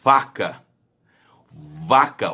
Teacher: o lábio inferior encosta o dente superior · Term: lábio dental